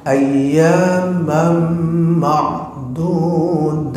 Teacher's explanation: Jadi mim tuh masuk, maka ini idgham, apalagi sama-sama. Ayyamam tuh mim satu masuk ke mim kedua